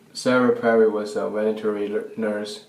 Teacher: So he says veterinary instead of veterinary. So he says a W instead of the V at the beginning